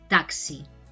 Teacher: a veces entre vocales se pronuncia como una K y una S, taxi. No diríamos taxi, taxi, pero sí que es el sonido de sh, ¿no?